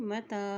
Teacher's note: ता के ऊपर खड़ी ज़बर है, एक हरकत लंबा पढ़ेंगे